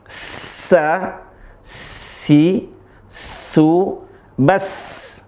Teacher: huruf sin-nya dibaca dengan tipis kemudian dengan keras saja. Keras desisnya mengalir dengan deras.